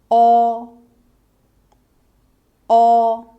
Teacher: The opening of your mouth is medium. The tongue position is mid-high and slightly to the back.